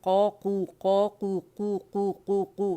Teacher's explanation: ہم نے اقص اللسان پہ جانا ہے نرم تالو سے لگا کے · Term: قاف